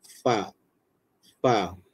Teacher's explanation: kena pastikan perut bibir bawah itu menekan ke gigi kacip atas